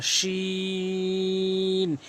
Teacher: শিন জিব্বার মাঝখানে উপরে তালু থেকে উচ্চারণ হয়